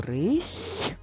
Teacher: перевіримо слово рись звук с звучить м'яко і це означає що за ним має стояти м'який знак який